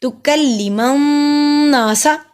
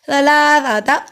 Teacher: سین پہ سٹی کی آواز آئے گی. ثلاثہ، اب دیکھیں سا نرمی والا حروف ہے، سا پہ سٹی کی آواز نہیں آتی